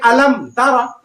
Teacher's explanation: اظہار شفوی میں غنہ نہیں کریں گے، یعنی صاف صاف کلیئر پڑھیں گے